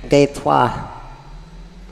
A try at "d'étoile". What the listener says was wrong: Oh, you missed the last syllable, le d'étoile.